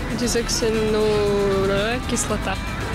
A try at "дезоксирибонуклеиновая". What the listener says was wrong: Хорошо было в начале, но в серединке что-то не очень, да, пошло? Дезоксириба, а дальше Н. Н.